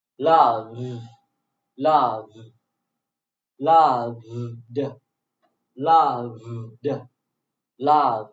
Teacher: because v is voice consonant sound, so ed is pronounced in voice consonant sound too. D, d.